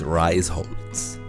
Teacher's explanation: germans do not pronounce s h as sh